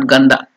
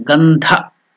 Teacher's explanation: So the dha is Mahaprana